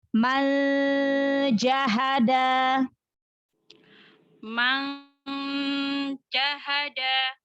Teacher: Nun sukunnya disamarkan lagi. Jangan nempel makhraj huruf nunnya.